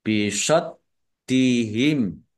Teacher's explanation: dalnya dibaca double, ya, ditekan biar tampak doublenya, ada tasdidnya. Kemudian mim sukun bertemu dengan huruf ain, bacaan idhar safawi, dibaca jelas.